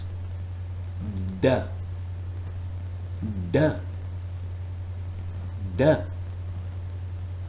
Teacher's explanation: the tongue tip is touching the alveolar ridge. So the first dimension tells us that this sound, which is D sound, is alveolar sound. · The tongue is completely blocking off airflow through the mouth. There is also no airflow through the nose. It is oral stop.